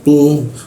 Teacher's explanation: tu itu berada di belakang gigi, lidahnya dilengkungkan sehingga aliran udara sedikit tertutup.